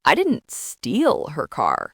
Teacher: If you stress steal, it suggests you perhaps borrowed it. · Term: sentence stress